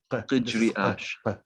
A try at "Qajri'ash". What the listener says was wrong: Like qaf in Arabic. Qaf. Qajri'ash. Well, you have to put the R in there. Qajri'ash.